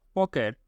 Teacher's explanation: প বর্ণটি অঘোষ অল্পপ্রাণ